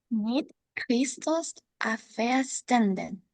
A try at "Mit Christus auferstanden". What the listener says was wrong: Bien, bien. Good, good. Muy bien.